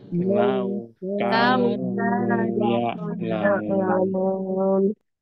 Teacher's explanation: Sedangkan waw sukun dibaca u, lau ya. Tidak dibaca o ataupun tidak dibaca e untuk ya sukun ya.